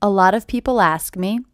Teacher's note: the first thing I noticed is this T is a flap T